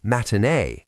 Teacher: replacing the T in the middle of a word with a glottal stop